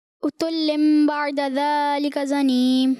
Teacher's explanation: تنوین کو میم سے بدلنا ہے اور غنہ بھی کرنا ہے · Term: اقلاب